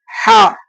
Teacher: ஹா வந்து அடி தொண்டையில இருந்து சொல்லணும். ஹா கீழே அடி தொண்டையில இருந்து, இப்ப நம்ம காரமா இருக்கும் பொழுதுதான் சொல்லுவோம் இல்லையா அப்படின்ற மாதிரி, அது மாதிரி அடி தொண்டையில இருந்து எழுப்பி சொல்லணும், ஹா என்பதாக.